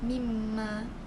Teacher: dibaca dengan merapatkan bibir dan didengungkan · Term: idgham mislain